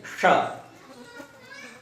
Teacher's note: ट कहां से बोलते हैं, जो मुख के अंदर जो सबसे ऊपर का भाग होता है, बिल्कुल सेंटर में जीभ उस पे लगती है। जैसे ट बोल के देखेंगे तो जीभ जो है मुड़ जाती है और ऊपर लगती है, वहीं से हम इस श को बोलेंगे। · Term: मूर्धन्य शकार